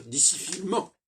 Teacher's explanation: Il faut que le N et le M soient reliés et pas séparés.